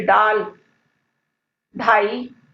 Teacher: ड और ढ में जीभ जो है सिर्फ मूर्धा को छूती है